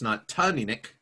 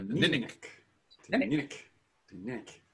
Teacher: accent on the second syllable but so it's not Tom Enoch and it's not Jenny Nick